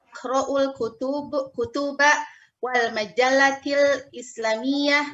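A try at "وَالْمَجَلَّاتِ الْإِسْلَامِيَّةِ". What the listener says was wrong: Wal majallatil islamiyah. Lamnya dipanjangkan, Ibu. Ulang lagi.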